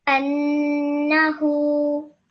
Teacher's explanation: You made sure that the n sound was 2 seconds. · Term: ghunna